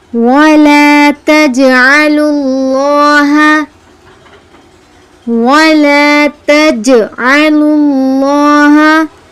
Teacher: جیم پر قلقلہ آیا ہے یعنی جیم کو ہلا کر پڑھیں گے